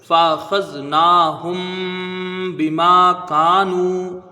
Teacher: اس کو ایک الف کی مقدار رکھیں گے کیونکہ یہاں واو ساکن سے پہلے پیش ہے، واو مدہ ہے۔ · میم ساکن ہے اور میم ساکن کے بعد با ہے تو یہاں اخفاء شفوی ہوگا، یعنی ایک الف کی مقدار غنہ کریں گے۔